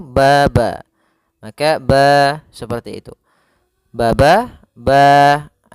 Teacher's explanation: Mad thabi'i panjangnya yaitu dua harakat